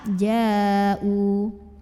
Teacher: hamzahnya yang u terdapat pada kata yang sama yaitu kata ja'u maka jimnya dipanjangkan boleh 4 boleh 5 harokat